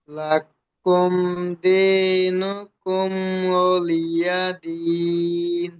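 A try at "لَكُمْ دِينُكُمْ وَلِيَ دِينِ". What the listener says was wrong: মাশাআল্লাহ, খুব সুন্দর পড়েছেন, জি খুব সুন্দর।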